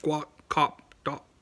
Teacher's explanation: They use the glottal stop with the P and the K sound